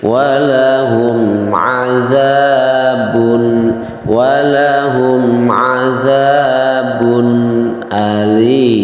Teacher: Azabun alim tanwin bertemu dengan huruf alif hukumnya adalah idhar hak ya. Idhar dibacanya tanwinnya itu adalah dibaca dengan jelas